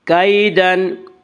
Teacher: یا لین وہ یا جو ساکن اس سے پہلے زبر ہو، یا لین کو نرم آواز کے ساتھ جلدی پڑھیں گے۔ کیدن، آگے آیت ہے وقف کریں گے۔